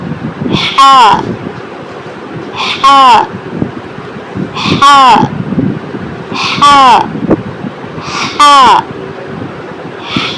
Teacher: पीछे हलक पर जोर दें, हा निकलेगा